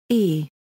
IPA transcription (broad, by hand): ɬ